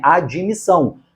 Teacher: Você já sabe que a admissão tem este encontro consonantal, não há nenhum I ali para desfazer o encontro consonantal, só na fala, que a gente mete esse I